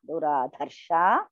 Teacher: The Du is Alpa Prana. Dha is Mahaprana.